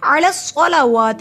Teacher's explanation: عین حلق کے درمیان حصے سے ادا ہوتا ہے